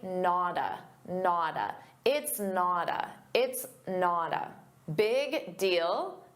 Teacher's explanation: we have a t between two vowels. So, a native speaker is going to pronounce that as a soft d and say nada.